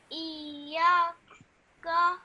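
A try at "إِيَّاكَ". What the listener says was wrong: Iyaka. Okay, so this ya, that has a alif madda afterwards. Okay, so you have to elongate that sound for 2 seconds. Iyaka.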